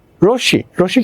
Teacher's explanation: আর এখানে আমার কি তালবস্যের সাথে মফলা রয়েছে, এই জন্য আমার তালবস্যের উচ্চারণ দিতে হবে, মফলা নিজস্ব উচ্চারণ হবে না